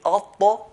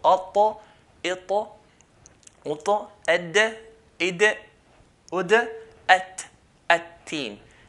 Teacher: tip of the tongue touches the gum line of the front two teeth